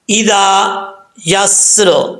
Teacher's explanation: वल्लैली, आगे है इज़ा यस्र, हमज़ा के बाद ज़ाल आ रहा है, ज़ा को पढ़ते वक्त बग़ैर सीटी के ज़ा को पढ़ना है, सीटी नहीं आनी चाहिए